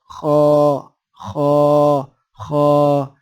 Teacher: اسی جگہ سے، اسی مخرج سے ایک اور حرف بھی ادا ہوتا ہے، خا۔ یہ موٹا حرف ہے، اس کی ادائیگی میں نچلا ہونٹ بھی تھوڑا سا گول ہوگا اور آواز موٹی نکلے گی۔ خا خا خا، جیسے خراٹے لیتے ہیں نا، جیسے انگریزی میں سنورنگ کہتے ہیں۔